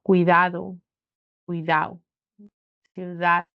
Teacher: omisión de la d cuando está entre vocales o al final de la palabra